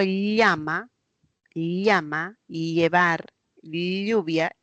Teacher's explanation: costados va saliendo el aire si digo Llama llama llevar lluvia cuando produzco una elle la lengua se pega en la zona palatal porque una el y e es una palatal esa se pega